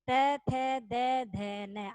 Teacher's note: अपनी जो जीभ है, जीवा व दांतों के टच हो रही है पीछे वाले हिस्से पे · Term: दंत्य